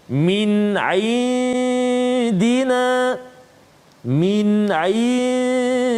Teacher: nun mati bertemu dengan dal, maka hukum dia dengung dengan kadar 2 harakat